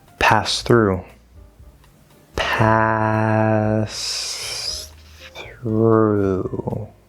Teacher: that th can sound kind of close to an s and they definitely flow well but there's no connection here we just clearly hear both sounds this is this is so